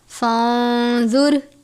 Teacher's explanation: فانظر، الف سے پہلے زبر ہے، الف مدہ، نون ساکن کے بعد زوا ہے، زوا کو ہمیشہ پر پڑھتے ہیں کیونکہ زوا حروف مستعلیہ میں سے ہے اور زوا حروف اخفاء میں سے بھی ہے، را ساکن ہے اس لیے را کو بھی پر پڑھتے ہیں۔